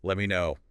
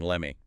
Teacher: The T in let drops before the M, and me reduces let me know.